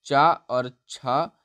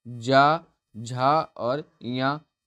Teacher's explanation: इसी प्रकार चा वर्ग में चा और छा हमारा अघोष व्यंजन हो जाएगा और जा, झा और या ये हमारा सघोष व्यंजन हो जाएगा।